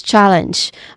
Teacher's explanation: challenge which also has two syllables and the stress syllable is on the first syllable. Ch. The first syllable is ch which has a ch sound and a short uh vowel sound.